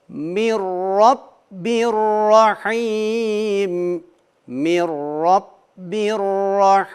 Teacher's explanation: ra harflerini de kalın bir şekilde okumamız gerekiyor